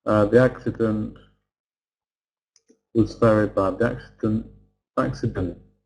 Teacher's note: Glottal stop means that we just take away T and we close our glottis.